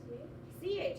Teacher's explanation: is an affricative CH that means we've got some friction and some air going on inside of our mouth